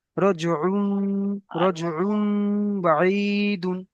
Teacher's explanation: তানবিনকে মিমের দ্বারা পরিবর্তন করে এক আলিফ পরিমাণ গুণনা করে পড়তে হবে